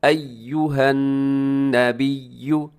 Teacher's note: अय्युहन ढीला करके नहीं पढ़ना इसे क्योंकि इसके ऊपर भी शद है। अय्युहन, अय्यो गलत हो जाएगा, अय्युहन नबिय्यु बल्कि अय्यु, अय्यु होंठ आपके गोल हो जाए पेश पर।